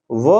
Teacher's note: एक एकलौता वर्ण होता है जो कि दांत और ओठ दोनों से बोला जाता है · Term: दंत प्लस ओष